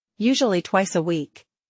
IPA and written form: ˈjuːʒuəli twaɪs ə wiːk (Usually twice a week)